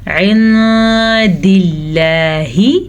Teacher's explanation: لفظ اللہ سے پہلے زیر ہے تو لفظ اللہ باریک پڑھا جائے گا